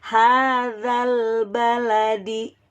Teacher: alif lam qamariyah ciri-cirinya itu lamnya terbaca jelas, ya, berbunyi L.